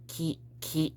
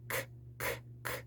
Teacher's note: It wouldn't be like ki, ki, ki, but it's more ki, ki. There's a bit more breath in that K sound, k, k, k, and less of a harsh k, k, k sound. You know, it kind of sounds like a beatboxing.